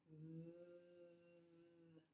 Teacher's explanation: The V is very noisy because we add something when we make the sound for the V. We add our voice. Now, you can feel the voice being added to that by putting your fingers right here, and you'll feel it vibrate a little bit.